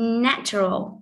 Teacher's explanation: Tương tự như thế đó là duration. Natural trọng âm rơi vào na